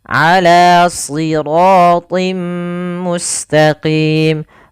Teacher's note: Lafal ala, huruf ain kita keluarkan dari tenggorokan tengah kita. Jangan ala, jangan dibaca dengan hamzah tapi dia dan juga jangan sampai huruf ain masuk ke dalam rongga hidung kita, tapi dia di tenggorokan.